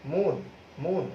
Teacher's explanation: আরো যদি তুমি দু একটা দেখো, অটল, অচল, এই শব্দগুলোর ভিতরে অ কিন্তু অ এর মতো উচ্চারিত হচ্ছে, যার জন্য এটাকে আমরা বলছি অধ্বনির স্বাভাবিক উচ্চারণ অর্থাৎ বিবৃত উচ্চারণ। আর অধ্বনি যখন ও ধ্বনির মতো উচ্চারিত হয়ে যাবে, তখন সেটাকে আমরা বলবো সংবৃত উচ্চারণ।